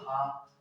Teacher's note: हा का जो उच्चारण होगा वो होता है कंठ से